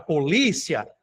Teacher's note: A palavra polícia, li é a sílaba mais forte e ela termina em duas vogais que não se separam, né, que é aqui um ditongo também.